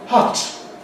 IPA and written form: hʌt (hut)